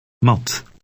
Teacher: T in Dutch is less explosive than in English.